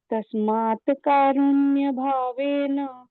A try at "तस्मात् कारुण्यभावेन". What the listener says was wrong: तस्मात नहीं है, तस्मात कारुण्य, तकार थोड़ा सा आधा उच्चारण चाहिए उसका। तस्मात